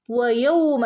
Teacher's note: വയൗമ ചുണ്ട് സർക്കിളാക്കിയിട്ട് ഓതുക